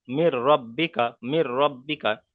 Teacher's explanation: তানবিন নুন সাকিনকে র এর সাথে মিলিয়ে পড়তে হবে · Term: ঈদগামে তাম বিনা গণ্য